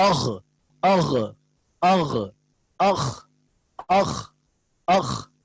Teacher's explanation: تو یہ اندر یعنی یہاں حلق سے ہمارے آخر حلق سے دو حرف نکلیں گے غین اور خا ، ان کی پریکٹس کریں اغ اغ اغ اخ اخ اخ،